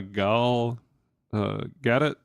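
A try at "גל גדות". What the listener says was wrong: The T is silent, I think. That's just how I hear other people say it.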